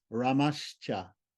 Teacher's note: Visarga Sandhi, Shore Visarga followed by a palatal C becomes palatal S